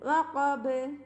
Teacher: ബാന് സുക്കൂന് കൊടുക്കുമ്പോൾ full സുക്കൂന് കൊടുത്തിട്ട് നിർത്തുക. വഖബ് വഖബ് അങ്ങനെ നിർത്തരുത്.